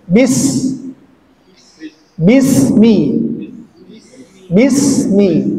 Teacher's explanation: sin sifatnya dia merupakan haas tapi untuk durasinya dia masuk ke rakhawah jadi agak lebih lama juga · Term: huruf sin